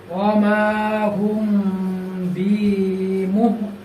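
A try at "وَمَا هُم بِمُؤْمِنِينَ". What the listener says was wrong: হ্যাঁ, এখানে মিমের উপরে জবর আছে, জবরের পাশে খালি আলিফ, এক আলিফ বাদ করতে হবে। ওয়ামা, তারপরে হোম, হোমের মধ্যে গুণা করতে হবে। একটু মিমটা কি আরেকটু লম্বা করতে হবে যাতে গুণাটা আদায় হয়।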